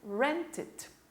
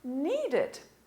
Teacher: Nós vamos puxar esse E para som de I.